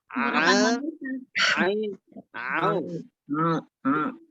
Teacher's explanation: Jadi tekanannya itu di tenggorokan, sebab ain adalah huruf halqiyah. Sebenarnya gampang untuk mengucapkan huruf ain sehingga berbeda dengan bunyi hamzah.